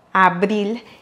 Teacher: on va prononcer ici le R simple car il est au milieu du mot